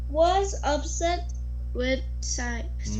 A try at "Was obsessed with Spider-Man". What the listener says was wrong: No, not upset. Obsessed.